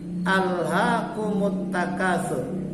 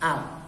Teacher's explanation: Hukum bacaan lam di sini lamnya ini hukum bacaannya lam tarkik. Artinya lam yang dibaca tipis.